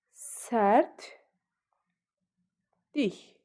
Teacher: Vurğu likin üzərinə düşür